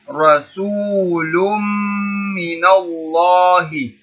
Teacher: When meme comes with a shadda, we are holding it one alif long.